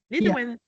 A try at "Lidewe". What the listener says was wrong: Without a N at the end. Without an N. So just Lidewe.